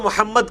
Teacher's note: اب یہاں پہ رکیں گے تو محمد کر کے دال پہ قلقلہ ہو جائے گا